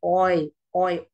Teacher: we do not produce only o sound in the boy we also produce I sound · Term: diphthong